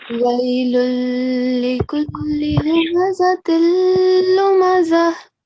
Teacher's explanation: So first of all, you're saying again and again wailun, which is not right in this case, because when you join this wailun with this second word likulli, the sound of the noon will be silent.